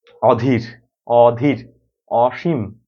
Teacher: তো আমরা একটা বিষয় পড়েছিলাম হয়তো এরকম যে নেগেটিভ অর্থে অর্থাৎ নাবোধক অর্থে কোন শব্দের সাথে যদি অ যুক্ত হয় তাহলে সেই অটা অই থাকে ও হয় না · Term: বিবৃত উচ্চারণ